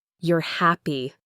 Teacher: Your voice goes down on happy.